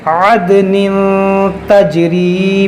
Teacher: دال میں قلقلہ کریں گے عد، اور پھر دیکھیں نون تنوین کے بعد تا ہے، یہاں پر اخفا کریں گے. عدن تجری، جیم میں قلقلہ کریں گے